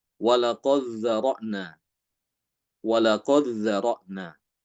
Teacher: baik Hisham maupun Ibnu Dzakwan dengan mengidghamkan dal ke dha. Dal dal diidghamkan ke huruf dal.